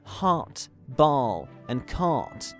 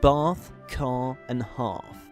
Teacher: the low back unrounded vowel. In English, this vowel is always long and occurs in different places depending on region.